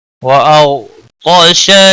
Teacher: غین اور طا دونوں حروف مستعلیہ میں سے پر پڑے جائیں گے، غین ساکن کو ہلانا نہیں، شین کو کھینچنا نہیں۔